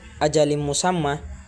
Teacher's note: apabila tanwin bertemu dan huruf mim, maka cara membacanya masuk dengan mendengung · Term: idgham bi gunnah